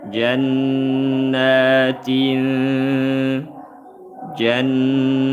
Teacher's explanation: tanwin berjumpa dengan ta ikhfa hakiki dibaca samar disertai dengung